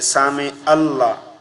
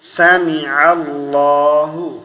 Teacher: عین کی جگہ حمزہ نہیں پڑھیں گے